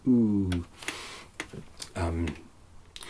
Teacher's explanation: you had a lovely round close harmony soft focus ooh